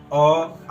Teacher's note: अ आ का उच्चारण स्थान कंठ होता है।